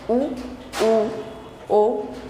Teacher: वृत्ताकार आप समझते हैं जब हमारे ओष्ठ जो है वो गोलाई में हो जाएंगे, और अवृत्ताकार जब वो गोल ना होकर के सीधे रहेंगे तब।